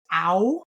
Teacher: If you have a vowel such as ow in the word found or out, it's an a and an oo. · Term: diphthongs